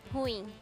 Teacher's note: Essa é uma palavra oxítona. A gente tem que separar o U do I. E ela, a última sílaba que é tônica.